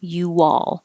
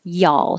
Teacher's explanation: In this case, I'm saying you, my lips get small, and then they come back and make a W.